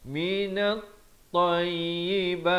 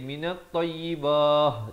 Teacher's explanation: Minat tayyibat, dan waqaf bila ta maftuhah begini dia kekal dengan bunyi ta. Jangan pula tukar jadi minat tayyibah, jadi tukar bunyi ha.